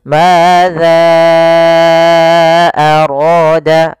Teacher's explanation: Maka kita panjangkan za-nya, hati-hati juga jangan terbaca dengan zai, tapi tetap za, yaitu ujung lidah menempel dengan gigi sari atas. Madza arada, baru dibaca dengan panjangkan za-nya dulu 4 harokat, baru kita baca a-nya.